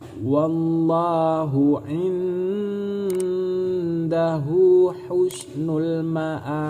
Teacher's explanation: Apabila ada huruf qalqalah dalam kalimat terakhir atau huruf terakhir, berarti cara membacanya harus memantulkan bunyi bacaan, karena ini ba ini termasuk huruf qalqalah.